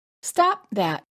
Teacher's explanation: when you say stop that, the final P must be held because the word that begins with a consonant.